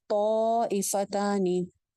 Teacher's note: حمزہ کی وجہ سے آنے والی مد کو 2 الف لمبا کیا جاتا ہے